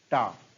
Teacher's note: टा, जैसा कि आप जानते हैं, टा का उच्चारण स्थान मूर्धा होता है, मूर्धा।